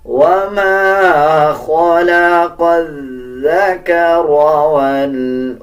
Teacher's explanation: اکثر لوگ اس کو زا پڑھ دیتے ہیں، بلکہ زا اور ذال ڈیفرنٹ الفاظ ہیں، ان کو اپنے مخرج سے ادا کیا جائے گا۔ جب آپ ذال پڑھیں گے تو ذال نرم حروف میں سے آتا ہے، زبان کی نوک دونوں دانتوں کے درمیان لے کے آئیں گے، تب ذال صحیح ادا کیا جائے گا۔